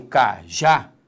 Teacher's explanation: Quando eu falo cajá, repare que a sílaba tônica é a última. Isso nos dá vou escrever aqui, ó, uma oxítona.